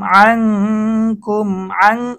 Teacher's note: নুন সাকিনের পরে আং এটা ইকফার গুন্না হয়েছে। নুন সাকিনের পরে ইকফার হরফ কাফ এসেছে, এখানে ইকফার গুন্না করতে হবে। আং কাফ মিম পেশ কুম, আং কুম, কুম এখানে মিম সাকিনের ইদগাম।